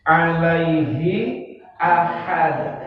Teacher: Hi dalam tenggorokan, ahad hak tengah tenggorokan